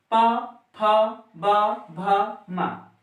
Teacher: जब हम इन वर्णों का उच्चारण करते हैं तो हमारे होठ आपस में चिपक जाते हैं। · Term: प वर्गीय व्यंजन